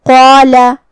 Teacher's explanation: تو ہم قاف کو اور مد الف کو دونوں کو بھاری آواز میں پڑھیں گے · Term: تفخیم